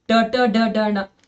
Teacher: ಮೂರ್ಧನ್ಯ ಅಂತಂದ್ರ ಅಂಗುಳದ ಮೇಲ್ಭಾಗದಿಂದ ಹೊರಡುವಂತಹ ಅಕ್ಷರಗಳು